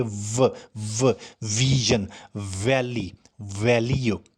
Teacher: Dental mean दांत, very simple is there, and labio mean होंठ again, यानी ऐसी आवाज़ जो एक होंठ और दांतों को आपस में टच करके निकलती है, is called labiodental. So the lower lip approaches the upper front teeth. मैं फिर बोलता हूँ कि आप नीचे वाले होंठ को चेक करें, वो ऊपर वाले दोनों दांतों को मिलेगा.